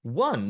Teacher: the initial sound of one is actually a consonant sound. It's a W.